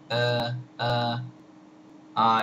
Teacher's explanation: uh is called aah uh uh uh it's an undefined vowel it's a central vowel uh the lips are not rounded uh the lips are not particularly closed or or open uh it's just a very relaxed vowel easy to pronounce uh